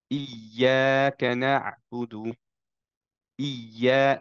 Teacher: প্রথমটাকে একটু নিচে করে ফেললাম এবং একটা বাউন্স দিলাম, যাতে বোঝা যায় ক্লিয়ারলি যে দুইটা ইয়া আছে